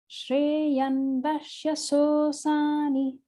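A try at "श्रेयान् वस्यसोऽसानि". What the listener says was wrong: So you got a long yan there. Make a note on the second syllable. Shreyan, yan, Shreyan Vashyasosani. Can still make it a little bit longer on the second okay.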